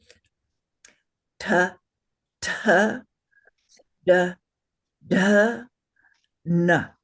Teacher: with the tip of your tongue against the bump behind your front teeth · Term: dental vara, fourth Varga consonants